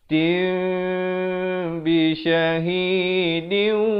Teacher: Sahabat-sahabat tukar bunyi nun kepada bunyi mim. Asalnya ummatin, tin, jadi tin, jadi mim. Tapi mim yang very special, bukan sebarang-barang mim ini. Mim yang nipis begitu. Bibirnya hampir bersentuhan saja. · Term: iqlab